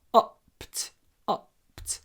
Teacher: Really short o before the unvoiced p.